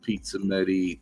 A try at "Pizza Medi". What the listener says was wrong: I'm sorry, it still sounds like you're saying pizza midi. It's like pizza.